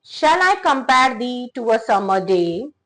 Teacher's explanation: Each line consists of 5 beats of iamb unstressed syllable followed by an stressed syllable, creating a rhythm and song-like flow that is reflective of poem's romantic theme. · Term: iambic pentameter